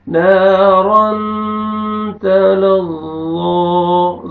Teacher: تنوین کے بعد حروف اخفاء میں سے تا ہے، یہاں پہ آپ نے اخفاء کرنا ہے